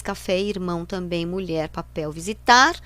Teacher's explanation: oxítonas porque tem a última sílaba forte